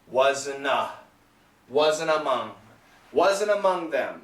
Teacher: this T is absolutely gone and the N keeps going